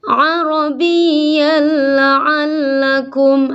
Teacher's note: ada tanwin bertemu lam, seolah-olah tidak ada tanwin, langsung arabiyyal. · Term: idgham kamil